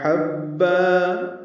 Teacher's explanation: حبا میں ہا وسط حلق سے ادا کریں گے ، با سے ملائیں گے اور با الف مدہ مد عوض، · با الف مدہ مد عوض، 2 حرکات اس کو بھی لمبا کرنا ہے